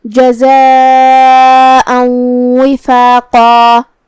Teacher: مد واجب متصل کا معنی ہے کہ حرف المد اور اس کی وجہ جو کہ حمزہ ہے دونوں ایک ہی کلمہ میں ہو. مد واجب متصل میں ہم اپنی آواز 4 مد کے برابر لمبی کریں گے. آخر میں حمزہ پہ تنوین زبر ہے.